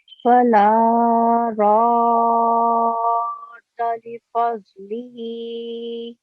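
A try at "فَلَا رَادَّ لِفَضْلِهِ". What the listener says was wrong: راد دال پر تھوڑی آواز ٹھہرنی چاہیے تشدید کی وجہ سے.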